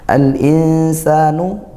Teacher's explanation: ada lam takrif bertemu huruf hamzah. Ini baru izhar qamariah. Itu dibaca jelas dalam takrifnya.